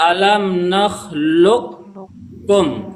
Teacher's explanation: Qafnya dimasukkan ke huruf kaf.